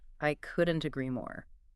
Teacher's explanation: The stress lands on couldn't and more. It creates a nice arch.